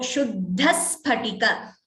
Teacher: Here, Shuddhas Phatika Vishadam. So, because of the Dvitvam, we hear an extra S here.